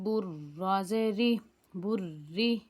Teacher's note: را باریک ہوگی، را کے نیچے زیر آ رہا ہے تو یہ را باریک پڑھی جائے گی